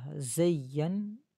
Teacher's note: یا کو نون کے ساتھ ملاتے وقت غنہ ہوگا، ایک الف کی مقدار ناک میں آواز چھپائیں گے